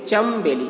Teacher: یہاں پر نون ہے لیکن نون کو میم پڑھتے ہیں · چن بیلی لکھا ہوا ہے لیکن اس کو پڑھتے ہیں چمبیلی